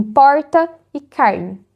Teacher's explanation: E tem mais um exemplo bem brasileiro, que é o R caipira, que é o que eu uso. O R, chamado de retroflexo, como em porta e carne.